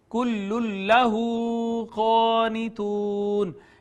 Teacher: اس نون تنوین کا لام میں ادغام ہو گیا، ادغام بلا غنہ، واو المدیہ صغیرہ، الف المدہ، واو المدہ اور مد عارض ہو گئی.